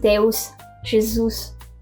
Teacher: the Brazilian Portuguese sticks to /s/